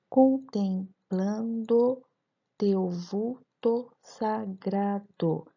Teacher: percebemos que a última sílaba tônica é o gra, de sagrado. Então, voltando àquela escansão que nós aprendemos na aula passada, percebemos que esse verso tem 9 sílabas, portanto, é um eneassílabo ou o verso jâmbico. · temos terceira, sexta, nona sílaba mais forte, as sílabas tônicas.